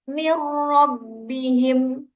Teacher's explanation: Di situ ada nun sukun bertemu dengan ro dan bacaannya tidak boleh dengungkan. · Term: idgham bila gunnah